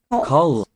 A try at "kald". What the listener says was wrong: Cold. Don't pronounce the D at the end.